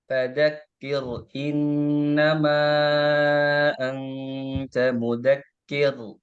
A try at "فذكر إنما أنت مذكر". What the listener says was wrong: Nah, kurang tipis. Fadzakir, kir, fadzakir innama anta mudzakir.